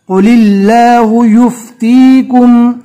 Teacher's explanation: اللہ کے لام کو باریک پڑھیں گے اس لیے کہ اللہ کے لام سے پہلے زیر ہے